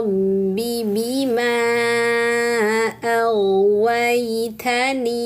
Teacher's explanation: fathah bertemu alif kemudian bertemu hamzah di kata yang berbeda, Teman-teman. Maka ini namanya mad jaiz munfasil. Panjangkan empat harakat ya.